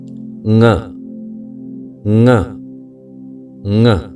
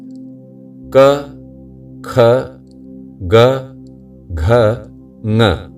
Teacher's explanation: क, ख, ग, घ तक केवल कंठ में कंपन होता है, किंतु ङ बोलते समय कंठ के साथ नासिका के उस भाग पर भी कंपन होता है जहां आपने अंगुली रखी है। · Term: अनुनासिक वर्ण